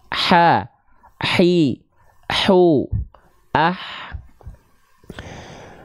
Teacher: Hak kecil itu dari tengah tenggorokan naik sedikit ke atasnya. Nafasnya karakternya lebih berbisik.